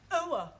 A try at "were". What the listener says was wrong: Almost. Try again, but this time, don't say oa, just were. Were.